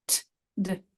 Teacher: the only difference is whether or not it's vocalized. Same thing with t and d